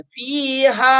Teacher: ملانے کی صورت میں تو لمبا کر لیں گے، اس کو کھینچ کر پڑھیں گے، لیکن اگر ہم یہاں وقف کر لیتے ہیں فیہا تو اس صورت میں جب سانس کو توڑ دیتے ہیں اس صورت میں زیادہ لمبا نہیں کریں گے